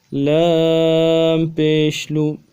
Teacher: لام کو 3 الف کی مقدار میں کھینچیں گے اور پیش میں ہونٹوں کو گول کریں گے